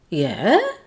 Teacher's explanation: Did you hear the change in the intonation? It was falling to rising. It's a bit like saying, really?